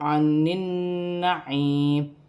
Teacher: نون مشدد میں غنہ کیا جائے گا، اور یا ساکن سے پہلے زیر ہے تو یا مدہ بنے گی، وقف کی صورت میں زیر گر جائے گی اور میم ساکن ہو جائے گی۔